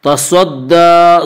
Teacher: تصدى، صاد کو پر پڑھیں گے، صاد حروف مستعلیہ میں سے ہے